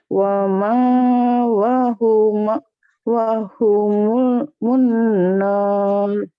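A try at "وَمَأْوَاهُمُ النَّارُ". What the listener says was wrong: wama ya, wama kan ada wama, ada hamzah, jadi kayak dijeda bacanya, bukan dipanjang.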